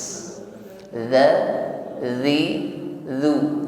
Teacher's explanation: Ingat mengucapkan zal sukun bukan sebagaimana huruf zai, tidak berdesis waz, bukan waz tetapi wal. Kita tampilkan ujung lidah bertemu dengan ujung gigi seri bagian atas, tidak ada suara desis.